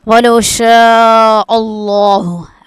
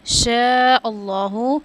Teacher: اب شین پہ جو ہے نا الف پہ مد ہے تو اس کو ہم 5 الف کے برابر کھینچیں گے